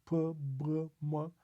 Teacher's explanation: you use both lips to pronounce PB M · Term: Two Lips